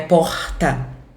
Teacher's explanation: no centro-oeste, aqui a gente tem esse R gutural, né? Porta.